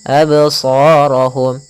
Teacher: Adapun pantulannya pun jangan sampai terbaca dengan adanya hamzah. Tidak dibaca dengan adanya hamzah yang dimatikan. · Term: qalqalah